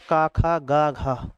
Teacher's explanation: तो कंठ में का वर्ग आता है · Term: कंठ ध्वनि